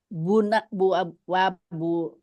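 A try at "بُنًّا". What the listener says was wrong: Bunnan. Iya, ada tasdidnya. Wa bunnan.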